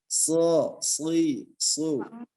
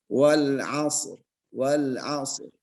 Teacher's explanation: huruf so ini sesuatu huruf yang disebut dengan huruf isti'la. Terangkatnya pangkal lidah. Isti'la artinya terangkat ya.